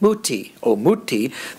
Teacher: if you get a high-low at the end, like muti, omuti, then you know that high tone had to come from the final syllable